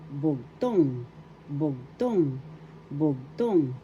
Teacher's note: the accent is the second syllable